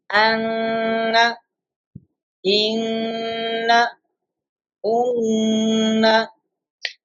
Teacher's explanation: We are taking the voice into nose, nasalization, Ghunnah.